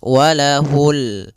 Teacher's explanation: Di sini ada bacaan alif lam pada lafal ini adalah lafal bacaan alif lam qamariah. Yaitu alif lam yang ditulis dan dibaca yaitu suara lamnya terbaca dengan jelas